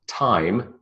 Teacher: the tongue sits at the alveolar ridge, okay? So the tip of the tongue is in the alveolar ridge. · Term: t sound